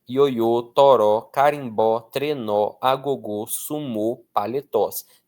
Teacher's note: Todas essas oxítonas força na última sílaba, tá? Terminada em o ou seguida ou não de s.